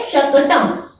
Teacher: शकटम में शा वर्ण जो है ये तालु से बोला जाता है